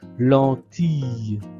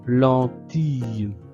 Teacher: le I double l se prononce comme le son yeu